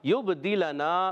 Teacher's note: با میں قلقلہ ہوگا، قلقلہ کے معنی جنبش حرکت ہونا، آواز لوٹ کر آئے گی، اور دال کی جس زیر لنا، لام پر زبر، نون الف زبر نا، لام کا زبر نہیں کھینچنا مگر نون الف زبر نا علی مدہ ایک الف کھینچنا ہے۔